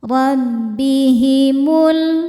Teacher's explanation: ro dibaca tafkhim karena berharakat fathah maka ronya tebal